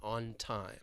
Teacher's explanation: we're stopping it with the N and then releasing into the T, on time.